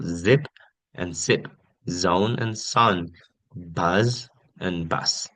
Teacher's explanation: the S is voiceless and the Z produces a vibration,